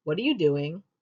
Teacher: With the descending tone, however, what are you doing? It comes across much more accusatory and implies the person you are speaking to is doing something wrong.